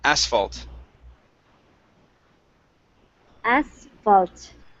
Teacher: The stress is at the beginning of the word.